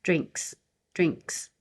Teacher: Drink is voiceless, drinks. And you don't have to have a really strong K, especially adding the S.